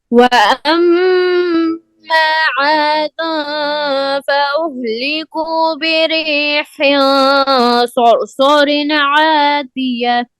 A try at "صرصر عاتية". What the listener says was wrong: صاد موٹا کرو اس کی آواز کو. صرصرن، اور رن میں آواز بند ہو جائے. صرصرن عاتیہ.